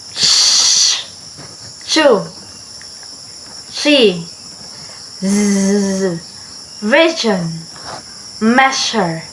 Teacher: Sounds produced by raising the tongue just behind the alveolar ridge. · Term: post-alveolar